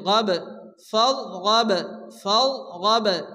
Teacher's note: করে মোটা করে উচ্চারণ করতে হবে ফারগব বার উপরে জজম আসছে বা কলকলার অক্ষর হালকা ধাক্কা দিয়ে পড়তে হবে